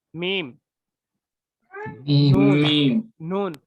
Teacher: आपका नाक का हिस्सा, खुशियुम यानी नाक का बांसा जड़, इससे गुन्ना निकलता है। यानी गुन्ना जब आएगा आपको, उस पे जो है आपको नून और मीम, नून मीम, ये गुन्ने की जगह से निकलेंगे।